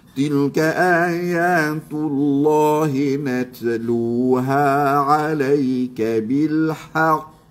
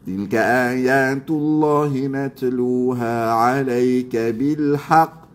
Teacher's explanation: Ha kan dia mesti ada syarat qalqalah ini tekan tahan lepas. Ha tekan pada makhraj huruf qaf tahan di situ pada makhraj huruf qaf lepas. Lepas tu melantun macam kita tekan bola boom lantun macam tulah.